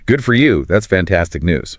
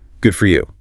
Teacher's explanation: The sincere response needs a warm rising genuinely pleased tone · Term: warm, rising pitch